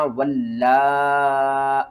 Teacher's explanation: यहाँ पर इस लाम को आपने 2 बार पढ़ना है, इस अलिफ को नहीं पढ़ना, और इस लाम को आपने 5 अलिफ के बराबर ऊपर की तरफ खींचना है